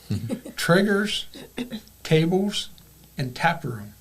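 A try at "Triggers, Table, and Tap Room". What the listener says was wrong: No S on the table,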